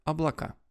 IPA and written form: ɐbɫɐˈka (облакá)